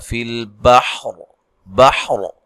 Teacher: إِنَّ فِي خَلْقِ السَّمَاوَاتِ وَالْأَرْضِ وَاخْتِلَافِ اللَّيْلِ وَالنَّهَارِ وَالْفُلْكِ الَّتِي تَجْرِي فِي الْبَحْرِ अच्छा, यहाँ जब वक़फ़ करेंगे, अब जैसे मैंने वक़फ़ कर दिया है सांस के ख़त्म होने की वजह से, तो रा को मोटा अदा करना है